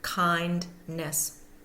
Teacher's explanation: the primary stress is going to be on that first syllable